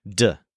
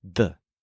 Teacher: It's actually pretty different from the English D. In English, we put the tongue against the roof of the mouth, D. In Spanish, the tongue is against the teeth, the. It sounds kind of like the th sound in they, the.